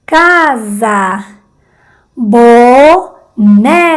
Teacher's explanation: Bo más débil, ne más fuerte.